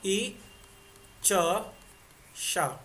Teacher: ई च श, ये तीनों के तीनों तालु से बोले जाते हैं।